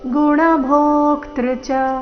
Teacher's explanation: ಭೋ ದೀರ್ಘ ಹೇಳಿ ಆಘಾತ ಮುಂದೆ ಅರ್ಧ ಕ ಪೂರ್ತಿ ತ್ರ ಸಂಯುಕ್ತಕ್ಷರ ಬಂದ ಕಾರಣ